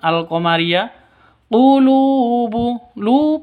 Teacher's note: panjang dua ketukan karena ada wau mati diawali dengan domah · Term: mad asli